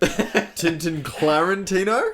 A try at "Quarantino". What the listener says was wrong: Quarantino. With a qu.